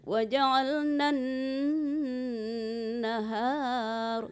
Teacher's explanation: waja'alna itu jangan dipanjangkan, dia langsung tasdid ke nun ya.